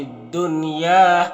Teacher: دنیا کے نون میں اظہار مطلق ہوتا ہے، نون کو ظاہر کر کے جلد پڑھیں گے، یہاں پر بولتا ہے وقف کی صورت میں مد عارض وقفی ہوگا تو اس طرح سے پڑھیں گے۔